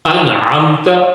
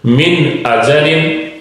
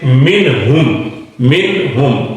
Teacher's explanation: یہ 6 حروف ہیں کہ جن کو یہ جب آئیں گے نون ساکن یا نون تنوین کے بعد تو اس وقت نون پورا پڑھا جائے گا، اس کی آواز کو سامنے لایا جائے گا، ظاہر کیا جائے گا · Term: اظہار